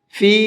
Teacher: یہ چھوٹا مد ہے تو اس کو 1 سے 3 الف کے برابر کھینچ کر کے پڑھیں گے